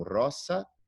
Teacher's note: o S nunca vai ser vozeado, então sempre vai ter o som de dois S